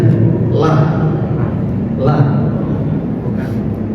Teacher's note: Kalau lam itu tepi lidah. Tepi lidah yang ditempelkan.